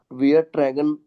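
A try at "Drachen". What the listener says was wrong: त्रैगन नहीं है, त्रा आ की मात्रा लगेगी। त्रागन।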